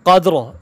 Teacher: را کو ہم کیا کریں گے، موٹا کر کے پڑھیں گے، قاف موٹا پڑھا جائے گا، دال پہ قلقلہ ہوگا